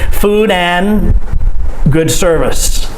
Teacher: we just say and without the d sound